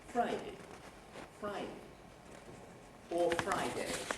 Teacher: doing Friday with a high fall